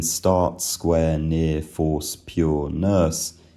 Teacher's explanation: The vowels in start, square, near, force, pure, nurse uh as I've said, are generally phonetically long monophthongal vowels for me.